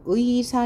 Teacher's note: 첫 음절에 의가 올 경우 의사 이런 경우는 반드시 의라고 이중 모음으로만 읽는다.